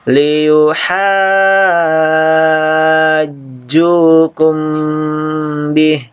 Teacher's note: Jadi ini panjang teman-teman sekalian karena mad asli ketemu dengan huruf yang bertanda tasydid. Jadi maka dibaca panjang bisa sampai 6 harokat